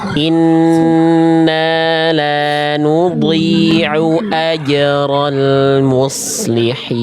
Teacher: Jadi pastikan hamzahnya jelas, tidak terbawa ain.